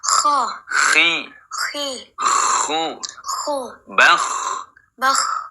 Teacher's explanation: Nah, kalau rokhawah itu yang mengalir suaranya. Kalau hams mengalirnya nafas, sehingga ketika mengucapkan huruf kha berarti dua-duanya mengalir